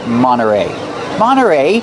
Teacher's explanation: you don't hear the T when it's between vowels Monterey you can say Monterey but you'll usually hear Monterey Monterey